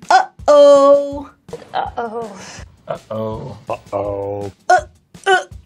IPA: ʔ